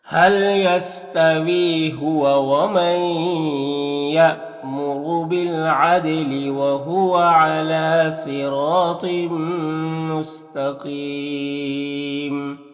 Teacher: حل یستوی یہاں پر وی میں یا مدہ ہے، اور ہوا ومن یہاں پر نون ساکن کے بعد یا ہے تو ادغام ناقص ہوگا، یہاں پر حمزہ ساکنہ جھٹکا لگے گا، را کو پر پیش را کو پر پڑھیں گے، دال میں قلقلہ ہوگا، اور یہاں پر لام میں کھڑا زبر ہے، یا میں کوئی حرکت نہیں ہے، صاد حروف مستعلیہ میں سے ہے، اور را کے اوپر زبر ہے تو را کو پر پڑھیں گے، اور الف مدہ ہے، ایک الف کے برابر کھینچیں گے۔ · یہاں پر یا مدہ ہے، تو وقف کریں گے تو مد عارض وقفی ہوگا